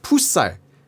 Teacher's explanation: the only deviations are where he's raising his pitch just a little bit